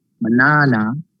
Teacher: in the word banana the stress is on the second syllable